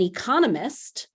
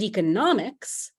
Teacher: an economist the person has the stress on that second syllable but economics the field has that stress on the third syllable